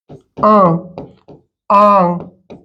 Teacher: और जब आपका जो हवा है, जो आपका हवा है वो मुंह प्लस नाक दोनों से निकल जाए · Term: अनुनासिक स्वर